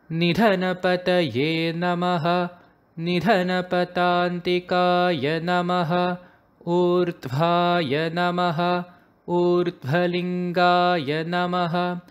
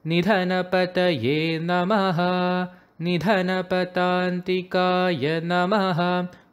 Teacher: every verse ends with a namaha, and the intonation for the namaha is a flat pitch. So it should be namaha instead of namaha.